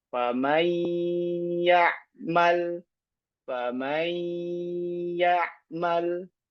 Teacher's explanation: nun sakinah ketemu ya. Famay yaal. Famay ymal. Ya, kita baca dengan gunah. Ya walaupun dia naqis ya.